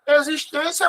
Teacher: Existência mais forte é a penúltima